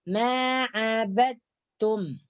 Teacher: Maksudnya idghamnya nakis adalah dal ini tidak dimasukkan secara sempurna ke dalam huruf ta. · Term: idgham nakis